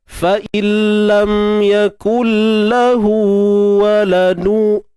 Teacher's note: Idgham maksudnya masuk, kita masukkan nun ke dalam lam, dan hakikatnya memang tak dengar lah bunyi nun tu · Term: idgham bila gunnah